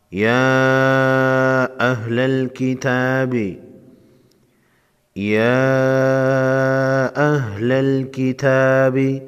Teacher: یا پر چھوٹا مد ہے، چھوٹی مد کو 3 الف کے مقدار کھینچ کر پڑھیں گے